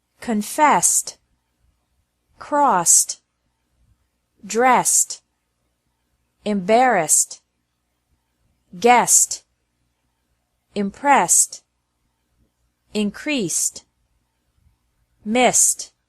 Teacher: e d is also pronounced like t after verbs ending with an s sound